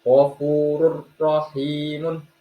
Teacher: Huruf ro tersebut dinamakan hukum bacaan idgham bila gunah. Dibaca bukan dengan dengung, tetapi jelas, tetapi agak ditekan sedikit.